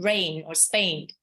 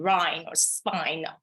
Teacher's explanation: the standard A sound in rain or Spain, rather than the Cockney diphthongs I in Rhine or spine